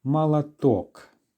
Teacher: the stress is on the last syllable so the first or letters will therefore be reduced Mala talk